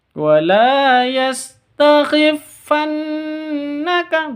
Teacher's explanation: Di sini ada nun tasydid, tentunya sudah paham ya. Ada gunnah musyaddadah, dengung dua ketuk.